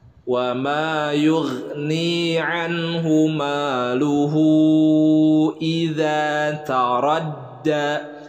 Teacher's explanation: luhu ini adalah mad silah tawilah, dibacanya panjang 4 sampai 5 harakat.